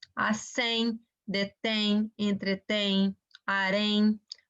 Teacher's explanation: Ditongo nasal, aquele som pelo nariz